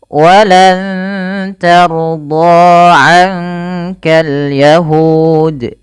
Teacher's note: huruf ro-nya dibaca dengan tebal karena ia huruf ro yang sukun didahului dengan fathah